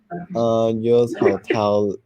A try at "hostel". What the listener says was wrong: Is that hotel? Did you see the word host? H-O-S-T.